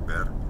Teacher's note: the word ver ends with an R, and so you should just barely tap it in casual speech